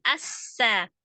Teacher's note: Sin adalah salah satu huruf samsiah. Maka langsung ditasdidkan ke sin. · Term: alif lam samsiah